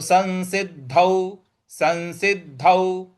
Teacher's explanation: अनुस्वार का न में उच्चारण ले आएंगे तो हो जाएगा संसिद्ध और जो द है उस पर हमको आघात देना है